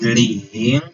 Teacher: it's a second tone. A second tone is a rising tone.